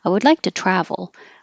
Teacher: change the T to a d and the U to an uh